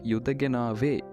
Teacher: is pronounced Yudganava with the stress on the second last syllable